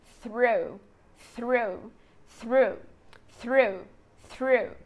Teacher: bem aqui na frente seguido de um ar são de um som de R retroflexo que é o r do interior de São Paulo